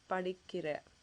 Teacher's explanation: so there is no nah sound at the end of it